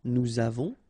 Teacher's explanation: final S not pronounced, and then we make this little link between the two